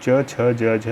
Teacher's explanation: तालव्य व्यंजन च वर्ग के जो भी होंगे वो तालव्य होंगे